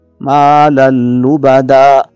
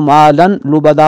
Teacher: اس کو اس طرح ادغام کر کے پڑھیں گے کہ نون تنوین کی آواز ظاہر نہ ہو۔ مالا لبدا، اس کو مالن لبدا پڑھنا غلطی ہوگی۔